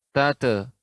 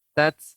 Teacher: Ta yang sukun tidak boleh memantul Ibu, tidak tate, tapi tat. Sifatnya adalah hamas.